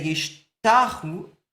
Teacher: if you contract yishtachawe by moving the emphasis towards the beginning of the word, and you say yishtachu, you're going to lose the last vowel, and you end up with these two silent schwas, wayishtachu.